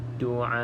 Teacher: pastikan Hamzah yang berada di hujung kalimah ni dijelaskan